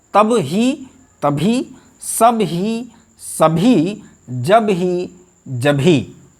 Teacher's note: तो ये अल्प प्राण ध्वनि बाद में हा आने के कारण महाप्राण में बदल जाएगी और ब वर्ण का महाप्राण होता है भ, और इस तरह से ये हो जाता है कब ही बराबर कभी। ब और हा मिलकर भा बन जाता है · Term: महाप्राणीकरण